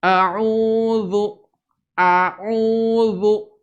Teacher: Mulutnya terbuka ketika mengucapkan a, kemudian monyong ketika mengucapkan huruf berbaris dhammah.